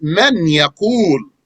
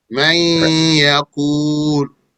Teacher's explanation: The origin is man yaqul. The noon is merged into the ya. So the ya takes a shaddah. Man yaqul. And this ya is not completely enveloping the noon.